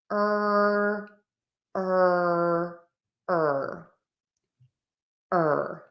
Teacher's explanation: square tense lips, back of the tongue pulled high up. Tip of the tongue is either down or flipped back.